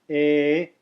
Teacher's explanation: But the letter E, English letter E, which is pronounced A, not a diphthong, just a pure A as in America, it does not have a line over the top of it, and yet it is a long vowel. It's held for 2 counts, twice as long as the short vowels.